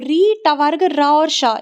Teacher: री का जो री स्वर है इसका, टवर्ग का, र का और श का, ये जो षटकोण वाला श है इसका। तो री, ट वर्ग, र और श इनका उच्चारण स्थान मूर्धा माना जाता है, इनका उच्चारण मूर्धा से किया जाता है।